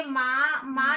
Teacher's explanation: तो आप देखना कि माँ, माँ जब हम बोल रहे हैं तो मुंह से और नाक दोनों से आवाज आ रही है माँ, तो वहां पर अनुनासिक होता है।